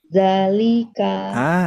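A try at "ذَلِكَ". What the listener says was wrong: Itu Bu, bagus. Sip, betul.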